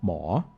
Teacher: the Thai word for doctor is more so that's more with like a rising tone